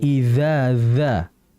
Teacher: Dengan torful lisan atau usulul lisan, yaitu ujung lidah, wa ma yuhadhiha min ats-tsanaya al-ulya, dengan menempelkan usul ats-tsanaya al-ulya, ujung gigi seri bagian atas. Jadi ujung lidah diapit sedikit oleh gigi seri bagian atas. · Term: huruf zal